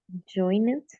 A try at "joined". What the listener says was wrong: Okay, that's the way we write it, join it. But the pronunciation, remember, is joined with letter D at the end. Joined.